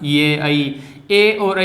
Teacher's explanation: ए और ऐ इनका उच्चारण स्थान कंठ तालु दोनों से है। तो कंठ तालव है, ये दोनों ही कंठ तालव है, ए ऐ कंठ तालव है।